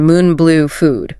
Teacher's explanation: Tongue is high and pulled back in the mouth.